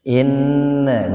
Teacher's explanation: Inna gunnah, nun bertasdid, gunnah itu mendengung.